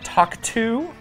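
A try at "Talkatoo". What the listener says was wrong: Talk-a-to. You said talk-to. It's an A in the name.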